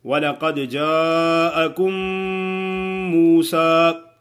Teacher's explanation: وَلَقَدْ جَاءَكُم میم ساکن کے بعد دوسری میم آ جائے تو پھر کیا ہو؟ دونوں میم کو ایک ہی میم مشدد ادا کریں گے، یعنی ایسا معلوم ہو کہ جیسے ایک میم ہی پڑھی گئی ہے